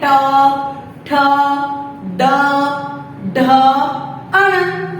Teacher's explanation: हमारी जीभ होती है वो थोड़ी सी मुड़ जाती है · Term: ट वर्ग